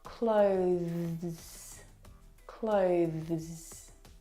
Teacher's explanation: Now the thing to remember that's really important is with that th sound you need to bring your teeth through your tongue through your teeth. Now the th sound is very very soft. It is definitely still there. It needs to sound different from the verb close.